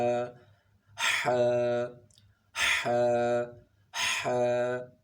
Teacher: ح کا مخرج ہے وسط حلق، یعنی حلق کے درمیان میں سے. حلق کے 3 حصے ہیں.